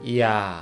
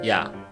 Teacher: You already knew vowel A, and this combined vowel start from Y sound and finish with A sound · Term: Y diphthong